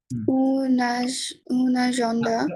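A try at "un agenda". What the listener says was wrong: উন না, এটা আ হবে, কি হবে?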